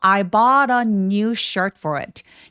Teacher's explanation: 근데 영어로는 단수 복수 구분을 하기 때문에 new shirts라고 하시면 돼요. a new shirt for it라고 단수로 T에서 소리가 끊어지는 느낌으로 발음해 보세요.